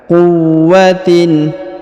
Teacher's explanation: huruf wa berharakat tasdid maka kita tahan dan kita tekan · huruf tanwin in dibaca jelas ya izhar